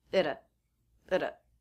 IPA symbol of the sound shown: əd‿ə